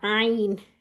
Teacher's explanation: آئین ہمارا وسط الحلق سے ادا ہوتا ہے. ٹھیک ہے، یعنی کہ اس کی آواز آپ نے تھوڑی سی نکالنی ہے.